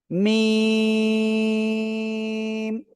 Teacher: দুই ঠোঁটের বাইরের অংশ শুকনো জায়গা থেকে